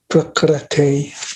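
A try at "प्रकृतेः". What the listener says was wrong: Not Prakrate. There's no A. There's a A. Prakrite. Ri, like Krishna. Prakrite.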